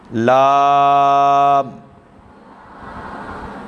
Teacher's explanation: یعنی زبان کا کنارہ ہوگا اور مسوڑوں سے ادا ہوگا